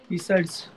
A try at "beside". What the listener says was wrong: ध्यान दीजिएगा, गलती से भी बिसाइड्स नहीं बोलना है.